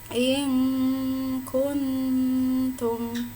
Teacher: nun bersukun bertemu dengan ta, ini bertemu dengan kaf, maka cara membacanya samar. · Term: ikhfa